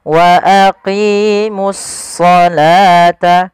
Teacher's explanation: Kemudian pada lafal as-shalah di sini ini langsung di sini ada alif lam syamsiyah, yaitu di sini ada alif lam, kita namakan dengan alif lam syamsiyah, yaitu suaranya kita langsung ke huruf shadnya